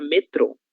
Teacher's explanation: possui o acento gráfico e tem como sílaba tônica a sílaba tro